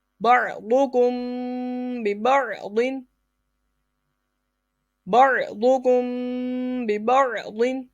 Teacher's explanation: میم ساکن کے بعد حرف با آ جائے اخفاء شفوی یعنی غنہ کریں گے